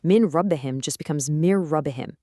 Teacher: You can almost feel that vibration in your nose. But if that next word starts with an L or an R, you merge it cleanly, without any nasal sound